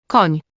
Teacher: a soft palatal N sound. If you've ever said canyon or onion, you've already made this sound.